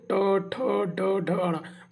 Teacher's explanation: ट वर्ग में देखिए मूर्धन्य मतलब देखिए ट ठ ड ढ अ, मतलब ऊपर का जो हिस्सा है तालु का, वहाँ से आवाज आएगी टच करके